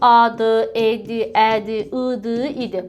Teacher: İndi dodaqlanmayanlar, baxın, A-dır, E-dir, Ə-dir, I-dir, İ-dir. Bunların tələffüzündə isə dodaqlarda dairəvi şəkil olmadı. Dodaqlarımız sərbəst vəziyyətdə olmuş oldu.